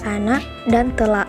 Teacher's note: akan direalisasikan secara berbeda dengan glotal pada anak dan telak. Dengan demikian dapat dikatakan bahwa realisasi fonem K dalam contoh tersebut adalah bunyi K dan bunyi glotal, dan kedua-duanya dapat dikatakan sebagai alofon dari fonem K.